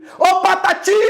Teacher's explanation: Olha esse ti, como ele se sobressai. Ele demora mais tempo sendo pronunciado. Epa! Então ti é mais forte.